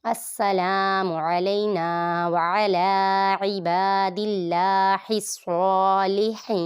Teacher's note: میم متحرک عین متحرک، لام پہ یا لین ہے، یا ساکن سے پہلے زبر ہے تو یہاں پر لمبا نہیں کریں گے